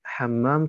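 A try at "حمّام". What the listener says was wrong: Du musst auch achten, weil du die Schette ein bisschen ausgelassen hast, dass hier eine Schette ist, Hammam. Wenn es keine Schette hätte, dann wäre es Tauber, Hammam. Großer Unterschied.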